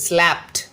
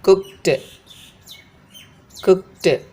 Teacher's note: Other than the t sound, when we have a verb with all these voiceless consonants, when we add ed to that, this ed should be pronounced as t but not d.